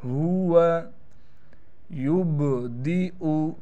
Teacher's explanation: बा पर क़लक़ला भी करेंगे। यहाँ पर आप देख रहे हैं बड़ी सी या लिखी हुई है, लेकिन इस या पर छोटा सा हमज़ा है, लिहाजा ये या नहीं पढ़ी जाएगी, बल्कि इस हमज़ा को हम पढ़ेंगे।